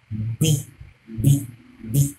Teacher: It's a labial sound. Your two lips coming together to produce it.